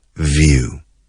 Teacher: que se pronuncia como una F, few, vibrando las cuerdas vocales a la vez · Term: the English V